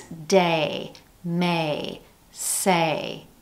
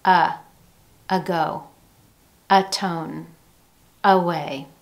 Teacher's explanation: In words with more than one syllable that begin with the letter A, that first syllable can be used with a schwa sound when it's a weak syllable.